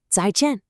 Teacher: notice how the tones are sharp and they fall down. 再见. It's kind of like a quick, clean chop.